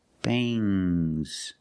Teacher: a little G sound, but not a hard, strong G.